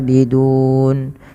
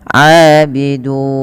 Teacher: Maka kita boleh memanjangkan lafal dun dengan 2, 4 atau 6. Maka wa nahnu lahu abidun, itu 4. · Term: mad arid lisukun